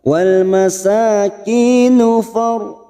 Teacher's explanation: ra sukun yang didahului fathah kita baca tafkhim atau tebal